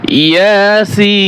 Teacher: ইয়া এক আলিফ টান হবে, সিন চার আলিফ টান হবে